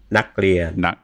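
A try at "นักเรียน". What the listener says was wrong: No, see how your liaison, the K to the R. It has to be naklien. There's no k.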